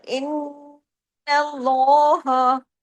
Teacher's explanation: لام کو ہیوی کر کے باقی تمام حروف کو باریک رکھنا ہے · نون پہ تشدید ہے، ڈبل نون ہے، نون پہ غنہ ہوا، آواز دیر تک ناک میں چھپی، اس کو کہتے ہیں نا غنہ. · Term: لام جلالہ